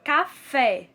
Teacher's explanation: a palavra café a sílaba tônica mais demorada é o fé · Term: oxítona